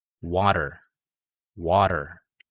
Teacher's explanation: it means that the letter t uh is a flapping t and should sound like a letter d